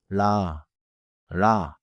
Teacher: At the start of a syllable, the tongue tip taps quickly. Listen. r r The tongue touches and leaves quickly. · The tongue touches and leaves quickly. Do not hold it like a long English L, and do not curl it like English R. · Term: 리을